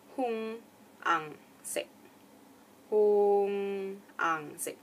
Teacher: So hmmm ends with a nasal tone at the back of your mouth. Ang is definitely nasal all the way